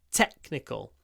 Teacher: And the e is clipped before the k sound.